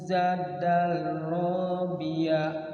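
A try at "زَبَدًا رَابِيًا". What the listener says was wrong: Zabadar pakai ba. Zabadar rabiya.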